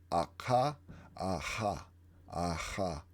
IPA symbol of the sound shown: ʁ